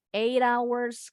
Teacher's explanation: Jadi bunyi T-nya in American English becomes a quick D. Bunyinya jadi seperti D yang cepat, tapi bukan D cepat. · Now, this is called a flap T sound in American English. When the T is in the middle between the two vowel sounds, the T sounds like a quick D.